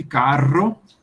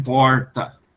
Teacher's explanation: O R vibrante, carro, e aquele R retroflexo de porta